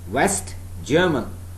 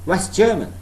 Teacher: So T is not pronounced. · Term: elision